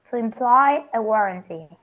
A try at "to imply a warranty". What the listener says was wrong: Yes, very good.